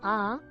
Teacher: इनके उच्चारण में ह्रस्व स्वरों से 2 गुना समय लगता है। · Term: दीर्घ स्वर